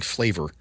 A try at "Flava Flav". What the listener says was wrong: It's an A, not an O-R.